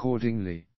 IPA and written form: əˈkɔː(r)dɪŋli (accordingly)